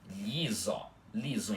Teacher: um I é mais rápido porque é da letra Lhe e o I é normal, uma vogal inteira